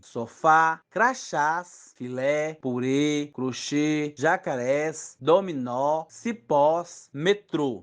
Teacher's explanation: as palavras oxítonas são aquelas que têm a última sílaba tônica, isto é, a sílaba mais forte da palavra